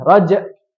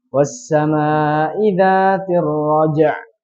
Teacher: Ain itu lebih ditekan daripada hamzah.